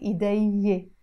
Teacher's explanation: we will drop this noon when we are adding the possessive ending. So we will not say, for example, idayne when we add the e, we will say idayyé.